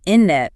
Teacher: dropping that first T or at least making it super soft. It's often not clearly pronounced. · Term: dropped sounds